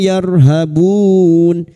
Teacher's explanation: ra sukun yang didoli fathah kita baca tafkhim